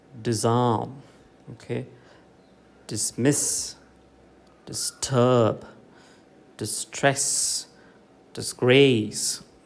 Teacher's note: is prefix iteration second syllable ah in the stress say that primary stress falls on the second syllable in all these words